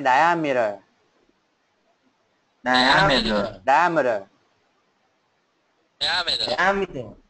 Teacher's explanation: Ok, nó âm chữ gần như chữ M đấy, nhưng mà cái chữ đấy phiên âm là âm ơ, nhưng mà mình đọc nhẹ thôi